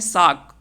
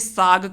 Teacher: क जो पहले क्या था, अघोष था, लेकिन इसको हमने बदल करके किस में कर दिया, घोष में कर दिया। तो इसे हम घोषीकरण कहते हैं।